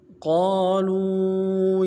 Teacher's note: لفظ قالوا میں قاف کو موٹا کرنا ہے، قاف کے بعد الف مدہ ہے، ایک الف مقدار میں کھینچیں گے